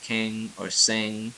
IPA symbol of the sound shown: ŋ